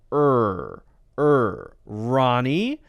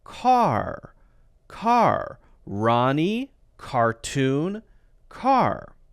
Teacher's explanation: you curl the tongue back and it's this strong R pronunciation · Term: American R